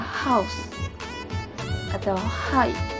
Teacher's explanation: Konsonan ini tergolong dalam glotal, frikatif, dan voiceless sound.